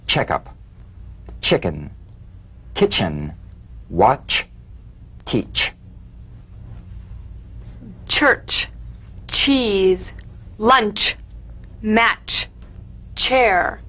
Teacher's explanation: Feel a sharp crisp percussive sensation between the tip of the tongue and the gum ridge.